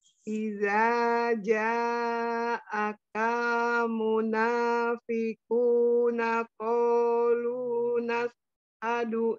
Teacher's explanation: Jadi lu-nya tetap 2 harokat saja.